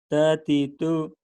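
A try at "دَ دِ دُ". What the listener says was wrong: Oh, bukan tatitu ini kedengarannya tatitu. Padahal ini dadidu, Mas. Dadidu. Daknya kurang jelas, Mas, artikulasinya.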